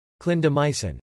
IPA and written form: ˌklɪn dəˈmaɪ sɪn (Clindamycin)